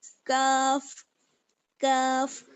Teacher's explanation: زبان کی جڑ اور اوپر کا سخت والا تالو